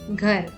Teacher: since there is no matra at the end of the word, the last letter is pronounced softly or as a half sound while reading